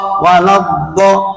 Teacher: ketika membunyikan la langsung do-nya disamber, lidahnya ditempelin di langit-langit yang atas, dirapetin. Waladdo, lepasnya bareng. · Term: makhraj